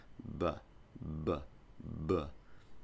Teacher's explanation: puff sound but this time we're going to use the voice you activate the voice just before you open your lips